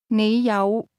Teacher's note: 你有幾多港幣啊？有，有。 The word have is pronounced with a low, rising tone.